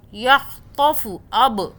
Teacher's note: یہ قلقلہ کا حرف ہے با، یعنی کہ جھٹکا. قلقلہ مینس یہاں پہ جھٹکا دینا ہے.